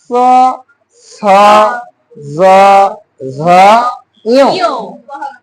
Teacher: ফুসফুস তাড়িত বাতাসটা বের হওয়ার সময় জিহ্বাটা উপরে তালুকে ঘেঁষিয়ে বের করে দিচ্ছে, তালুর সাহায্যে উচ্চারণ করা হচ্ছে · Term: তালব্য ধ্বনি